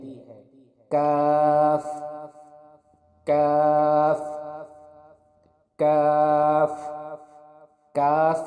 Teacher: کاف کے مخرج کی ادائیگی زبان کی جڑ اور تالو کے سخت حصے سے ہوتی ہے